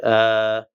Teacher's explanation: burda heç bir, yəni dilin və ya dodağın və ya burnun funksiyası yoxdur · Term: mədd hərfi